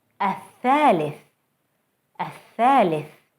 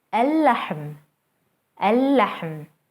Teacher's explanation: Notice how the sun letter is doubled and how the L sound is lost. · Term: sun letters